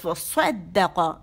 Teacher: قاف کے لیے آواز ایک کاؤنٹ کے لیے اوپر چلی گئی